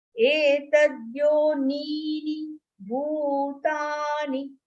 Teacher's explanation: The first ni is long, second ni is short.